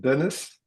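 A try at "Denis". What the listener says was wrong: Dennis, yeah, it's Dennis. It's actually like with a long E, so it's like Dennis, you know?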